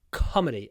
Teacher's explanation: comedy stress on the first syllable